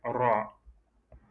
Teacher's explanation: il y a la langue qui est dirigée vers le haut et ça touche un peu le palais et ça revient.